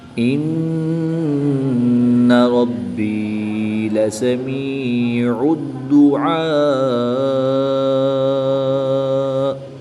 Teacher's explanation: وقف کی حالت میں حمزہ ساکن کو جھٹکا دے کر پڑھیں گے